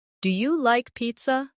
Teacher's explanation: Make sure your voice rises at the end. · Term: intonation